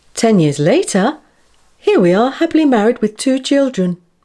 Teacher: Notice how the voice rises at the end of non-final phrases, after the comma, and falls on the final phrase at the full stop.